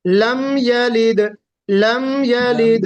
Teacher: لم میں کوشش کیجئے غنہ نہ ہو، آواز میم کے مخرج میں ٹھہرنا نہیں چاہیے۔